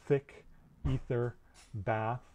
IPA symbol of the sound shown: θ